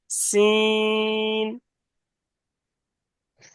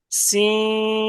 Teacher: জিভের আগা এবং উপরের দাঁতের আগা দিয়ে উচ্চারণ হবে, একটু সিটি মতন আওয়াজ হবে।